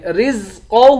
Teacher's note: را کے بعد زا ہے، زا کی سیٹی نکالیں گے